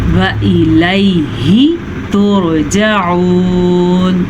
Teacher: را ساکن سے پیچھے والے حرف کے اوپر پیش ہے تو را ساکن کو ہم پر پڑھیں گے. عین کے مخرج کا دھیان رکھیں گے.